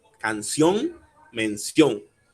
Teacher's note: Otro ejemplo podría ser, por ejemplo, canción, mención. El acento estaría en la O, en la última O, y luego viene una N.